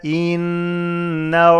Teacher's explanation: the noon has shadda, is ghunna to harakat.